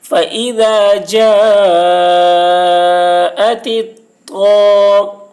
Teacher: شمسی کے شروع میں الف لام ہے، اس لیے الف لام کو نہ پڑھیں گے بلکہ بعد والے حرف طا سے ملا کر پڑھیں گے